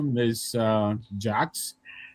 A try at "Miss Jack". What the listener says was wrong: Jack, no S, no S.